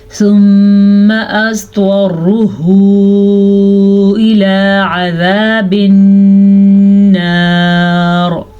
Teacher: ضاد کو پر پڑھیں گے، طا کو بھی پر پڑھیں گے. یہ دونوں حروف مستعلیہ میں سے ہیں.